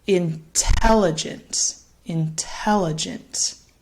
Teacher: you'll notice the first syllable in intelligent, it's a little quieter, a little bit faster.